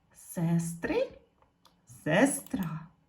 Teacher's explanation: ненаголошений звук е у вимові наближається до и